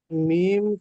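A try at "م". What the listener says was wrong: টানটা খেয়াল রাখতে হবে তো। মিম কলিক টান আছে, বলুন।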